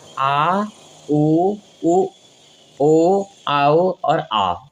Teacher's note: इन स्वरों के उच्चारण में जीभ का पश्च भाग कार्य करता है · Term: पश्च स्वर